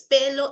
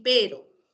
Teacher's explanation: cuando yo pronuncio la L, el aire sale por los costados. Por eso le dicen lateral. El aire sale por los lados. Cuando tú pronuncias la R, el aire sale con vibración, como si estuviera arrancando un carro.